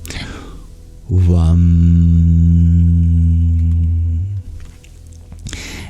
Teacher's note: It'd be more correct to say a W, but create a vibration in which it sounds like a V.